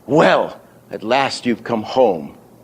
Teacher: well is the accent and the accent would be on the e on the vowel right bang you'd mark that on your sheet as big accent